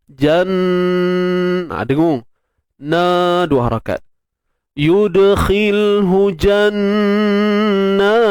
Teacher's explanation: Jan wajibul gunnah, kemudian ma asli. Kita dengung pada nun bersabdu tu, kemudian kita panjangkan pula 2 harakat.